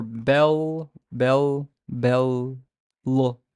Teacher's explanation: There is a back or velarized element to the sound.